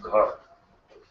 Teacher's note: But gha is voiced as well as mahaprana. So gha is both. It is vocal cords are together, and you need a larger volume of the wind to pronounce that gha.